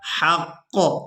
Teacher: اب یہاں پر آپ لوگ علامات وقف دیکھ رہے ہیں، تو وقف کریں گے تو وقف کی صورت میں قاف پر پیش کو ادا نہیں کیا جائے گا،